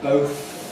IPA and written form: bəʊθ (both)